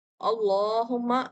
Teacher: یہاں پر اللہ کا لام جو ہے وہ موٹا پڑھا جائے گا، کیونکہ اس سے پہلے حمزہ وصل پر زبر ہے